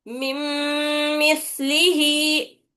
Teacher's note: तो ये हर्फ पे हम मीम के ऊपर कामिल तरीके से नून की आवाज मीम में मिल जाती, पूरी तरीके से नून मिल जाता, नून की आवाज नहीं आना इसमें